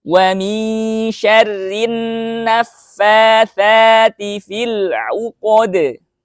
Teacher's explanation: ada nun bertasydid ya karena dia ada hukum alif lam syamsiah. Jadi nunnya gunnahnya harus hitungan 2 harokat ya